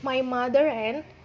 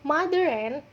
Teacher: Saat kita mengucapkan mother and, dari kata mother ke n, terdapat penambahan suara r